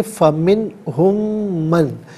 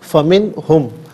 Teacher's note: اچھا، من میں نون ساکن ہے، اس کے بعد دو چشمی ہائے، تو نون ساکن پر یہاں غنہ یا اخفا نہیں ہوگا، اسے یہاں پر اظہار ہوگا۔ فمن ہم، میں ہم نہیں، فمن ہم۔